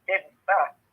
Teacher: It has two B's, so it's Diba. You hold it for an extra B.